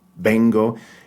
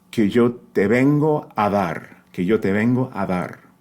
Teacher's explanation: Que yo te vengo, again, that soft B, not closing your lips all the way. It's not vengo.